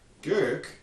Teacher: in isolation, at the end of a word, we would expect devoicing. We already know that from looking at these guys, and we'd get gurk.